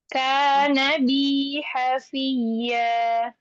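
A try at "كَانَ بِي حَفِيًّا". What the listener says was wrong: Kana biha fiyya. Kana biha fiyya. Sa'astaghfiru laka rabbi innahu kana bi hafiyya. Kana bi hafiyya.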